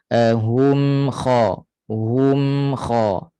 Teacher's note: Bainiyah, pertengahan. Jadi suaranya akan naik ke hidung sebab mim memang khayshum, tempat keluarnya ke rongga hidung. Jadi bila dia mati, tawassutnya berlaku di hidung lah. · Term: mim mati